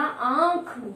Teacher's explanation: इसे बोलने के लिए हमारी नाक और मुंह दोनों को कार्य करना पड़ता है। यदि दोनों में से किसी एक में रुकावट पैदा होती है तो वो इसका उच्चारण हम नहीं कर सकते हैं, ठीक है। · हमारे मुख और नाक दोनों से वायु बाहर आती है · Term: अनु नासिक